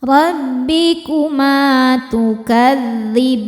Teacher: Ma hukumnya mad tobi'i dhohiri karena ada alif didahului harokat fathah. Cara bacanya panjang 2 harokat.